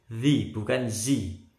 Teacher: Hati-hati lidahnya nempel di gigi atas.